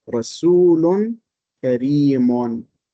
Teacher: But simply because we stop at Kareem, we do not pronounce that tanween.